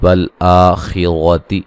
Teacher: خا کو موٹا ادا کریں گے, را کو موٹا ادا کریں گے